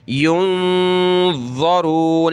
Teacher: نون ساکن ہے، یہاں ہم نے ناک میں آواز پیدا کرنی ہے